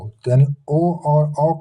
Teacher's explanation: ओ और औ का उच्चारण स्थान क्या है कंठोष्ठम है मतलब कंठ और ओष्ठ दोनों है।